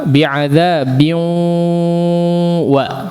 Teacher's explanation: Adzabin masuk gunnah, jangan biu mulut saja suaranya tidak. Tapi ada udara atau suara juga dari hidungnya.